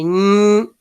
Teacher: y me toco las cuerdas vocales, voy a ver que ñ sí vibra. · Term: sonoros